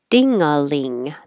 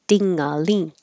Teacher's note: The ding and the ling both have the ng high, when your tongue is high in the back, touching the top of the mouth